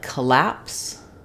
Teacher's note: so in collapse the stress falls on the lapse